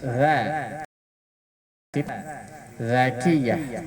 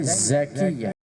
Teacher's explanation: itu lidah sama gigi ketemunya. Ujung lidah di gigi atas.